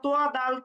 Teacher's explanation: আচ্ছা, এরপরে 13 নম্বর মাখরাজটা আবার উপরের দাঁতের সাথে যদি আমরা ফিরে যাই তাহলে হচ্ছে উপরের দাঁতের গোড়ার সঙ্গে লাগিয়ে আমরা তোয়া দাল তা উচ্চারণ করলাম, আর উপরের দাঁতের আগার সঙ্গে জিহ্বার আগা লাগিয়ে হচ্ছে জোয়া জাল সা, নরম করে উচ্চারণ করতে হবে।